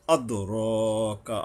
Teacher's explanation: আদ দালের উপরে কলকলা, প্রতিধ্বনিত, কলকলা মানে প্রতিধ্বনিত। ওয়ামা আদ র কা, র এর উপরে 1 আলিফ টানতে হবে।